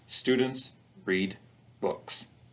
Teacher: a simple sentence that only contains content words as a result every word in the sentence will receive stress